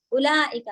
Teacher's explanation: हमजा पे दम्मा के साथ एक ही हरकत पढ़ेंगे, वाव जो है उसको साइलेंट रखना है